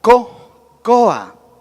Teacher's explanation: en esta palabra la sílaba fuerte es O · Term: acento prosódico